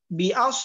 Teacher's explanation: বিআস এখানে সদ মোটা হবে, আমাদেরকে খেয়াল করতে হবে